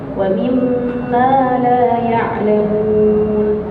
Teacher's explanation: Mimma itu juga ada dengung. Mim yang bertasydid, nun yang bertasydid, di situ ada dengung. Kita tahan bacanya panjang seperti panjang dua harokat.